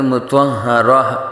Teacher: گولتا کو وقف میں ہا ساکن سے بدل دیتے ہیں ، تو اس لیے یہاں مطہرتن نہیں پڑھیں گے، یا مطہرتا